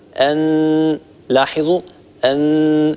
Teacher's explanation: هذا بالنسبة لمخرج حرف النون من طرف اللسان مع ما يحاذيه من اللثة ويصاحب ذلك غنة من الخيشوم.